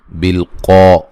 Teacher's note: قوف کو موٹا ادا کریں گے